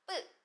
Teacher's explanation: 그냥 브 보통의 세계의 소리를 예사 소리라고 이야기를 해요. 그럼 여기서 약간 더 성대 긴장을 주고 소리를내는 걸 된 소리라고 합니다.